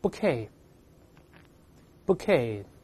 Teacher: 这是个外来字，后面的▁t▁不发音的